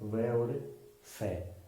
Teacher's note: दंतोष्ठ, यानी जो दांत और ओष्ठ से बोला जाता है